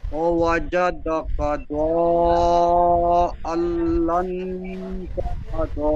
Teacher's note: ডালের উপরে খাড়া জবর এসেছে, খাড়া জবর আলিফ মাদ্দার সমতুল্য, সুতরাং খাড়া জবরকে আলিফ মাদ্দার মতন এক আলিফ পরিমাণ টান দিয়ে পড়তে হয়। যেমন ও ওয়াজাদাকা দাল্লান ফাহাদা।